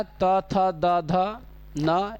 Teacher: त वर्ग का उच्चारण स्थान दंत होता है